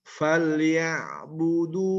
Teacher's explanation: Ain ini adalah tawasud. Tidak syiddah, tidak rokhwah, tapi tengah-tengah.